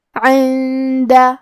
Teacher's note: دال حروف الاخفاء میں سے ہے اور اخفاء کا معنی ہے چھپا دینا، تو ہم نون ساکن کو چھپاتے ہوئے اور غنہ کے ساتھ یہ حکم کو ادا کریں گے